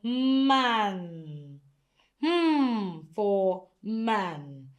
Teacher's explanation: So you can see that when producing the sound, your lip is pressed together. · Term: nasal sound